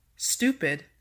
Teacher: And for number 5, stupid, the STU is stressed.